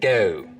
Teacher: Now another thing that starts to happen as we get down towards Philly is that the goat diphthong starts to move forwards in the mouth